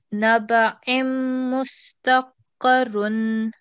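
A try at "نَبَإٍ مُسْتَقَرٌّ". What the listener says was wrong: No, karrun. There's stress here on the last bit.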